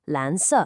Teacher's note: That's 蓝, a rising second tone, and 色, a falling fourth tone.